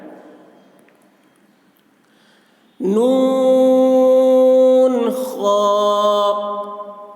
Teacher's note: نون کو زیادہ کھینچیں گے، خا کو کم